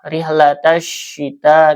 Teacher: Dibacanya diidghamkan, alif lamnya tidak terdengar ya. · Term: alif lam syamsiyah